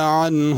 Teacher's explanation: عنہ میں عین ہے، اس کو عین صحیح ادا کرنی ہے، حمزہ انہ نہیں پڑھنا